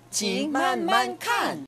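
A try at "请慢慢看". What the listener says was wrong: 예, 마지막 거 좀 더 세게 볼게요. 칸. 징만만칸.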